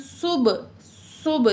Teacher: क़ालू इत्तख़ज़ल्लाहु वलदन, वलदन तनवीन के बाद सीन हरूफ इख्फ़ा में से है, तो यहाँ तनवीन की आवाज़ को नाक में छुपा के पढ़ेंगे। वलदन सुब, सुब सीन में सिटी, बा पे कलकला करेंगे, बा साकिन है